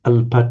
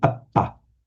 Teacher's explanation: they generally merge into a doubled consonant in Pali